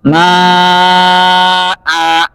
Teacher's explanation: Kemudian kata ma'an, jika wakaf dibaca ma'a. Dua harakat. Karena alif yang berada setelah hamzah merupakan perubahan daripada tanwin.